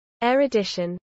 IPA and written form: ˌɛɹʊˈdɪʃən (erudition)